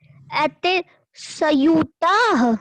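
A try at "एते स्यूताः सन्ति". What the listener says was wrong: आधा सा है, संयुता नहीं होगा,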